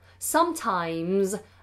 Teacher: the S on the end of the word sometimes is pronounced like a zed so make that more voiced Z